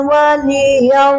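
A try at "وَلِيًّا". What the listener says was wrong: Waliyau itu ada tasdid Bu ya. Tasdid ini harus dibaca waliyau. Waliyau.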